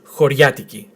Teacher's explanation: But in Greece when you start talking quite fast, it sounds 'horyiatiki' not 'hor - i - a - tiki'.